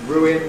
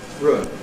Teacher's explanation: So, underlyingly [ˈruːɪn], but we seem to end up with a surface [rʊɪn].